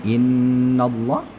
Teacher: Di sini innallah, sama-sama kita ketahui ini adalah gunnah musyaddadah. Allahnya ditebalkan sebab innanya ini ya, innanya ini berharakat fathah, maka Allah ditebalkan.